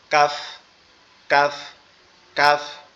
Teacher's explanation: কাফটা হচ্ছে জিহ্বার আগা উপরের তালুর সঙ্গে লাগবে, জিহ্বার আগা উপরের তালুর সঙ্গে লাগবে, লেগে নর্মাল ভাবে উচ্চারণ হবে, একটু বাতাস বের হবে